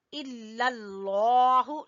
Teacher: लफ्ज़ अल्लाह को मोटा पढ़ेंगे